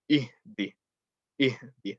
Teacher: From the bottom of the throat, both the hamza and the ha from the bottom. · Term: small ha